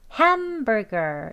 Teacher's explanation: ham을 가장 강하게 그리고 그 다음에 여기 burr 할 때도 강세가 두 번째 강세가 있는 거예요. 가장 강하게 그 다음 강하게 그리고 여기 girl 할 때는 힘 빼시고 약하게 발음해 주시면 되겠습니다. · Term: 제2강세